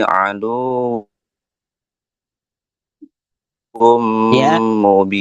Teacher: tanwin damatain bertemu dengan mim namanya idgham bighunnah. Jadi harus dengunnya sampai dua ketukan